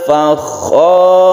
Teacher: Ditebalkan roknya karena rok ini menjadi sukun yang sebelumnya ada fathah, maka roknya ini tebal atau tafkhim.